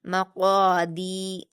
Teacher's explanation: दाल पर या मदद्दा है। इसको हम दो हरकात खींचेंगे।